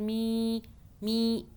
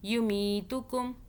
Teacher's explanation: یا سے پہلے زیر آ رہا ہے تو یہ کیا ہو رہا ہے, مدہ ہو رہی ہے, یعنی کہ ہم کھینچ رہے ہیں, می میم یا زیر, می می نیچے کی طرف.